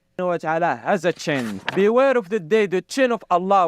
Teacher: he can't pronounce sh, so he says ch